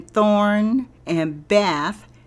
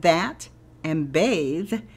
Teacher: The TH in thorn and bath have the soft sound of TH, while the TH in that and bathe have the hard sound of TH